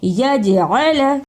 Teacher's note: جیم جزم کی صورت میں حرف قلقلہ ہے، یعنی اس لفظ کو ہلا کر پڑھنا ہے۔ عین پر زبر، اسے جلدی پڑھنا اور لام پر بھی زبر ہے، اس کو بھی جلدی پڑھنا ہے۔